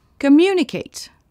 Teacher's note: L'accent tonique est sur la deuxième syllabe.